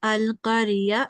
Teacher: they only make a 1 second sustained nasal sound. So just 1 second sound, like a blink.